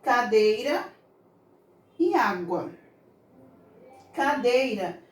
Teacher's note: Se você pronunciar com mais calma, bem mais devagar, você vai perceber que o som que sai da vogal I, ela é mais fraca na palavra cadeira. A gente dá mais ênfase à vogal E. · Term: semivogal